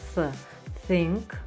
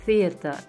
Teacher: Келесі әріптер тіркесі TH бірігіп, Th дыбысын береді, яғни тіліміз жалпақталып, тілдің ұшы тістердің ортасынан шығады